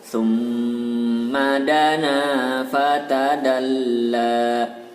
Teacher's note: maka dibaca dengung dan ditahan panjangnya 2 harokat